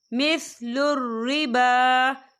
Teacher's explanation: با کے پر کھڑی حرکات ہے تو ہم اسے 2 یا 3 حرکت کے برابر کھینچے پڑھیں گے۔